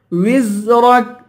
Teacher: وزرك زا کی سیٹی نکالیں گے، را کو پر پڑھیں گے، آخر میں کاف ہے، کاف کو باریک کریں گے.